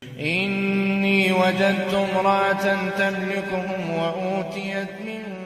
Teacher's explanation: امرأتان تملکہم میں اخفاء کو مکمل طور پر چھوڑ دیا گیا